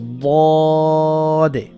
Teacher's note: জিব্বার গোড়ার কিনারা উপরের মারি দাঁতের গোড়ার সাথে লাগাতে হবে।